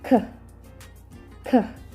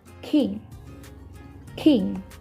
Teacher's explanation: In a velar consonant, the body of the tongue approach or touch the soft palate or velum